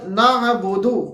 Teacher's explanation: عین ہے جو کہ ہمارے پاس حلق کے درمیانی حصے سے ادا ہوتا ہے، یعنی وسط حلق، اس کے بعد ہمارے پاس وَإِيَّاكَ نستعین کے اندر ہمارے پاس عین ہے دوبارہ سے آ رہا جو کہ ہمارے پاس وسط حلق سے ادا ہوتا ہے۔